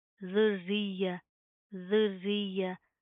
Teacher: را یا زر ری یا زبر یا, ذریہ, ذریہ. را اور یا کے اوپر کیا تشدید آ رہی ہے, ان کو سختی سے مضبوطی سے جما کر پڑھیں گے · را اور یا کے اوپر کیا تشدید آ رہی ہے, ان کو سختی سے مضبوطی سے جما کر پڑھیں گے. ٹھیک ہے, زال کے اوپر زبان باہر کی طرف آئے گی, نرمی سے ادا ہوگا